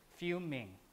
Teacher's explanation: native speaker would push the m as the onset of the next syllable fuming like that rather than fume in okay so that's the